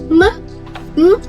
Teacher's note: If the nasal is plus, it produces with the velum lowered and air flows through the nasal cavity